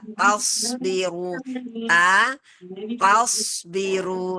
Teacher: Taknya jangan ikutan tebal. Taknya tak biasa.